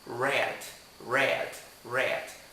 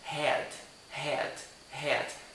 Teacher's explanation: O R, ele tem um som sujo, que dá tipo uma fricção nas cordas vocais